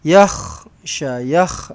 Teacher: yakh ada bunyi kahak dia tu